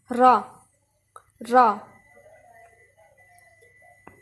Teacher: جب آپ دونوں دانتوں کے ساتھ اپنی زبان کی پشت لگائیں گے تو نوک کے تھوڑا سا آگے سے تو یہ را ادا ہوگا